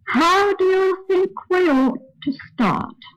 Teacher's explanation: that sentence starts on a fairly high note, and it continues on that same note until it reaches the word ought.